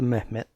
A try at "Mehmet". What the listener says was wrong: I don't think you pronounce the H like that. A lot of people think Turkish sounds like Arabic, and it doesn't at all.